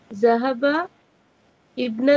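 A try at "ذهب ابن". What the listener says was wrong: Zahabab. Zahabab. Alif is silent. You can say that, but if you keep in mind the rules of pronunciation of Hamzatul Wasl, then we should say Zahabab.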